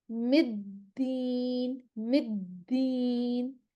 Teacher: तो हम यहाँ पर भी अपनी मखरिज पे ज़ुबान जब हमारी आ जाएगी दाल के मखरिज पर, तो फिर हम आवाज़ को चलने देंगे। मखरिज से ज़ुबान नहीं हटानी है, थोड़ा वहाँ पे हमने स्टे लेना है। मिद्दीन, मिद्दीन, इसको फ़ौरन से अदा नहीं कर देंगे। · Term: दाल मुशद्दद